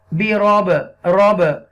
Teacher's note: यहां पर कलकला करेंगे क्योंकि बात साकिना है